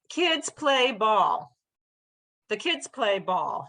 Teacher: I barely said the word the.